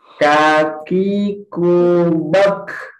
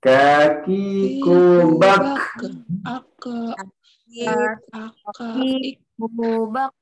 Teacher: makhraj huruf Kaf ini pangkal lidah paling belakang pada posisi menempel langit-langit ke depan sedikit setelah makhraj Qaf